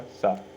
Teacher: हमारा सा जो है वो दांत से बोला जाता है। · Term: दंत वर्ण